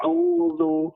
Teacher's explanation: Jadi bukan o ya, tapi a dibuka sedikit kedua bibirnya. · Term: baris fathah